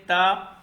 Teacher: اس کے بعد تا آ گیا جی، اس کے بعد تا اوپر کے دو نقطے، تا کی نشانی ہوتی ہے، تا باریک لفظ سے تا ادا ہوتا ہے، زبان کا سرا اوپر کے دو دانتوں کے ساتھ مل کے